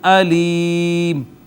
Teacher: یا کا ما قبل مکسور، یہ یا مدہ ہو گئی، اس کے یا مدہ کے بعد آ گیا سکون، اور یہ سکون عارضی ہے، اس وجہ سے یا مدہ پر ہم جو ہے وہ مد عارض کریں گے